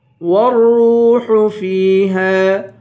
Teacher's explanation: را کو واو سے ملائیں گے، واو کو ایک الف کی مقدار کھینچ کر پڑھیں گے